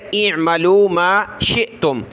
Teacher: حمزہ کو عین کے ساتھ ملا ہے، حمزہ کی آواز پھر عین کی حمزہ پر زیر ہے اعملوا ما شئتم، حمزہ ساکنہ جھٹکا دیا